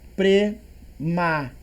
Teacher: Prematuros, ela é paroxítona, né? Porque a penúltima é mais forte